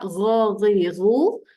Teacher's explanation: hujung dekat sini kerongkong okey bunyi macam nak mengeluarkan kahak